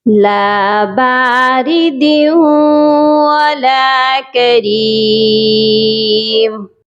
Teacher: لام الف زبر لا، لام کے ساتھ الف ہے اسی لیے لام کو ایک الف کے برابر لمبا کر کے پڑھا جائے گا۔ باردیوں، دال کو واو مشدد کے ساتھ ملائیں گے اور غنہ کر کے ملائیں گے